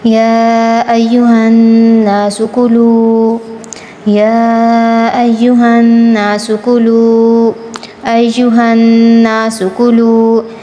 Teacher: یا کو ہم نے 6 الف کے برابر کھینچ کر پڑھنا ہے · نون پر اخفا کرنا ہے